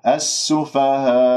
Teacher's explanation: تقف بالنبر حتى أنا أتم قفل أوتار الصوتية وما تضيع مني الهمزة